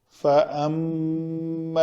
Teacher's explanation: غنہ سے مراد یہ ہے کہ میم کے مخرج سے اس کو ادا کرنا ہے اور ناک میں بانسے میں اس کی آواز جو ہے نا وہ تھوڑی سی گنگنائے اور غنہ پیدا ہو